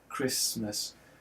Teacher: there's a T in the middle there that we no longer pronounce · the S and the T are both articulated on what we call the alveolar ridge